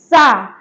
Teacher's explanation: कहिए, आप भी बोलिए सा। यानी इस सा को बोलने में हमारे ऊपर नीचे के जो दांतों का आकार है वो आपस में मिलता है। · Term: दंतिक सा